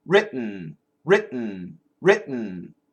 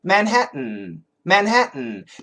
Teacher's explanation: It's not really the standard glottal stop. It's more of a stop in the front.